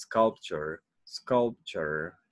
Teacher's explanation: it goes up in sculpt and then goes down into sculpture